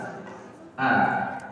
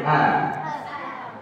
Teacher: Yang keluar dari tenggorokan, pertama pangkal tenggorokan. Hamzah sama ha.